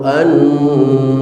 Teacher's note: tasdid yang ada di atas huruf nun berlaku hukum gunnah musyaddadah, an ditahan selama 2 harokat